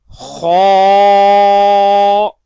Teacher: جیم، الف، خا، الف. فرینڈز، خا کو ہم ہر حالت میں پر پڑھیں گے کیونکہ خا ان حروف میں سے ہے جن کو ہر حالت میں پر پڑھتے ہیں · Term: حروف مستعلیہ